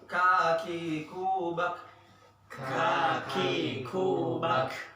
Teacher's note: kaf itu hamas. Jadi ada udara keluar. Jangan ditahan-tahan. Jangan bak.